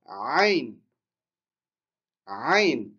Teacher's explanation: Donc ayn, ça vient du fond de la gorge.